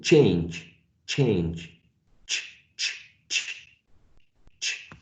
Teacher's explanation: It's produced like after the alveolar ridge and in between the alveolar ridge and the hard palate. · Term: post alveolars